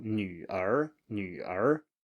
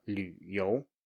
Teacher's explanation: It's just a low tone plus a rising tone. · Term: low tone plus the rising tone